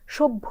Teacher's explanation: শুনেই নিশ্চয়ই আপনি বুঝে নিয়েছেন যে আমরা কিন্তু প্রথমে বলিছি অর্থাৎ ভ এর যে অল্পপ্রাণ উচ্চারণটা সেটা প্রথমে করেছি তারপরে ভ যেটা নিজস্ব উচ্চারণ মহাপ্রাণ ধ্বনি সেটা বলছি